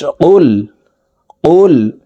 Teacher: কফ হরফ জিহ্বার গোড়া তার বরাবর উপরের তালুর সঙ্গে লাগাইয়া উচ্চারণ করতে হবে